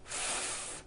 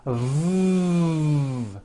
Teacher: so the F sound is unvoiced and sounds like this F and the V sound is voiced and sounds like this V correctly pronouncing these sounds will make